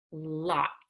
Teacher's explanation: I use a broadened tip to the front of my tongue, and the air goes around the tongue